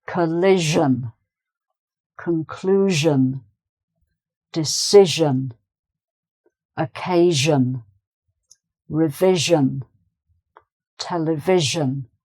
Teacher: it's zhun, not shun, but zhun, so it's a heavier sound